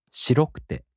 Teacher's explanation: 白い turns into 白くて. So the accent falls on ろ.